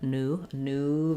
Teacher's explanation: in american english we say that with an ooh no glide no new but new new there's going to be a little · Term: oo, no glide